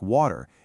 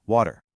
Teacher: In British English, the T in the middle of a word like water is usually pronounced very clearly. But in American English, that T often softens into a D sound, known as a flap T, which makes it sound more like water.